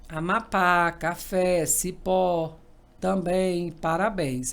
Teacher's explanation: quando eu falo de palavras oxítonas, sílaba mais forte é a última. Sempre você vai contar, gente, do fim para o início, tá?